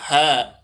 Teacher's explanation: ईसद विव्रत है, संवर है, नाद है, घोष है और महाप्राण है